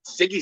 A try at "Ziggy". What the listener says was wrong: you're saying Siggy like it's a cigarette